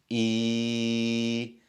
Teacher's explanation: you raise wasatul lisan, the middle of your tongue, and you drop your jaw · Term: ya al-maddiyya